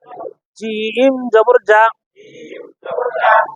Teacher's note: জিম জিহ্বার মাঝখান থেকে শক্তভাবে